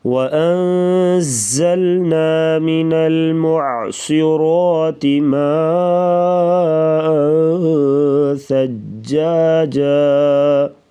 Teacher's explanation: صاد اور را کو پر پڑھیں گے موٹا، ما پہ مد کریں گے